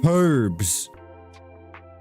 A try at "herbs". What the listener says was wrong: No, there's an H. Herbs.